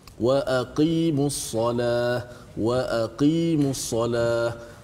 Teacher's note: Mesti kedalamkan sedikit huruf qaf.